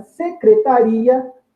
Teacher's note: Já em secretaria, note que nós temos dois impulsos, o I e depois o A. Logo, em secretaria, por termos dois impulsos, é sinal que temos duas vogais. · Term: hiato